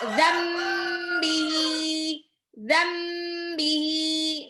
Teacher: Nun sukun ketemu ba itu iklab. Nunnya berubah menjadi mim. Ditahan 2 sampai 3 harokat.